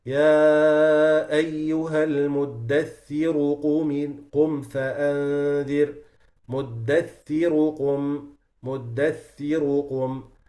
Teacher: So the ra becomes heavy because of the dhamma on it. So the ra is one of these letters where if you stop on it or if you continue, the rule might change.